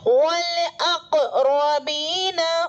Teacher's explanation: قاف کا مخرج ٹکر کھا کر الگ ہوگا اور ایک ٹوٹتی سی آواز سنائی دے گی · سادی را پر زبر ہے، یہ را متحرک ہے یعنی پر ہوگی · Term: حروف قلقلہ